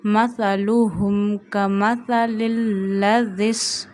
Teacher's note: Don't stretch zama on lam and ha. And read this ha from the last part of your throat